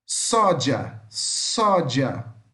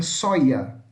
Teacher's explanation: Na América Latina, fala-se com esse som de D com J